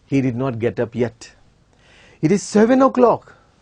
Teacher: the tune is rising